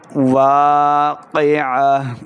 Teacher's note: وقعت الواقعہ، واو الف زبر دیکھیں الف سے پہلے زبر ہو تو الف مدہ ہوتا ہے، ہم اس کو دو حرکات لمبا کر کے پڑھیں گے. الف مدہ ہے، واقعہ، قاف زیر قاف حروف مستعلیہ سے ہے، موٹی آواز کے ساتھ اس کو پڑھیے.